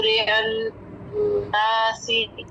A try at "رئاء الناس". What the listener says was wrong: دوبارہ سے رئاء الناس، مد کو ٹائم دیجیے، پورا کیجیے.